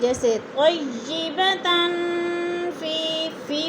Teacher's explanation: طیبة، تن دو زبر تنوین، فا حروف اقفا میں سے آ گیا ہے تو ادھر اقفا ہو رہا ہے، غنہ کریں گے، آواز کو ناک میں چھپا کر پڑھیں گے. جیسے طیبة فی میں یا مدہ ہو رہا ہے، اس کو بھی تھوڑا سا لمبا کرنا ہے